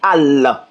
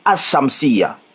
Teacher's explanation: Tu vois, quand le alif walam est employé avec une lettre shamsiya, il y a une règle de lecture. Le lam ne doit pas être prononcé. · Tu vois, par exemple, si tu écris, par exemple, on va prendre le soleil en arabe, al-shamsiya. Tu vois, tu dois pas dire al, on doit pas entendre le L. Tu dois dire ashamsiya.